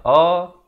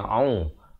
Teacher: A di pangkal kerongkong, au di pertengahan kerongkong